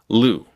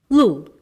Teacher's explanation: in Mandarin, only the tip of your tongue comes up, and it reaches just behind your front upper teeth